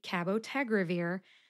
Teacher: that second a will sound like a schwa a or an uh sound